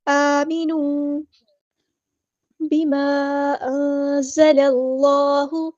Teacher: disconnected مد ہے، مد منفصل، تو ہم نے یہاں پر 2 یا 4 کاؤنٹ ہم نے اس کو لمبا کرنا ہے ، 2 یا 4 حرکات ہم نے اس کو لمبا کرنا